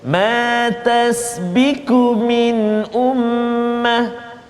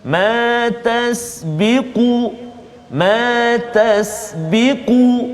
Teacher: Dia bunyi ada qaf tu, dia bunyi tebal. Kalau tak ada ke, tipis bunyi, salah. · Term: huruf qaf